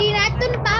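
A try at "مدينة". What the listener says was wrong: Ya Madinatun atau Madinah sama aja teman-teman. Bedanya cuma cara bacanya aja. Kalau orang Arab itu bacanya bukan Madinatun tapi Madinah. Madinah.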